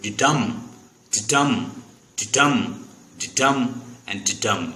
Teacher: आयाम is a डी डम. डी छोटा है, आगे डम जो है वो बड़ा है, तो पहले पे स्ट्रेस नहीं है, दूसरे पे स्ट्रेस. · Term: iamb